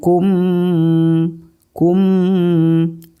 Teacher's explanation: kemudian hukum yang ke-15 yaitu adalah Ikhfa Syafawi cara membacanya yaitu suara mim mati ditahan serta didengungkan